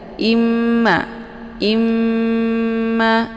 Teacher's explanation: Kemudian fa imma, fa dibaca pendek, imma di sini ada mim yang bertasydid. Ini dinamakan dengan ghunnah musyaddadah. Cara bacanya didengungkan.